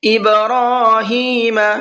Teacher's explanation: ابراہیم با کے اندر قلقلہ کریں گے، اس لیے کہ با حروف قلقلہ میں سے ہے، اور حروف قلقلہ پر جب جزم آتا ہے تو وہاں پر قلقلہ کر کے پڑھتے ہیں۔